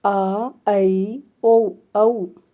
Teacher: और विवृत में क्या होता है, मुंह बिल्कुल पूरा खुल जाता है